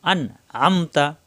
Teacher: এখানে কোন গুন্না হবে না এই নুন সাকিন স্পষ্ট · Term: ইজার হরফ